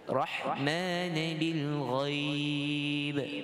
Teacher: Jangan tuan-tuan tebalkan semua huruf. Yang tebal hanya ra.